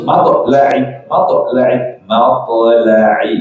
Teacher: Matla'i pakai ain, terus qalqalahkan to'nya. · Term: Qalqalah ringan